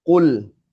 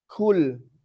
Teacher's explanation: Nah, qof dengan kaf sama tempatnya. Belakang lidah menyentuh langit-langit atas